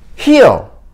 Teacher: 혀끝의 치경이 안 닿고 그대로 소리가 밖으로 나가는 소리. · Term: dark L